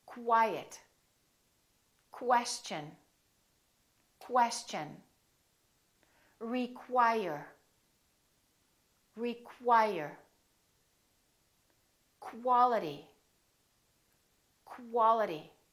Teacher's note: they're pronounced as k w so there's a little w sound in here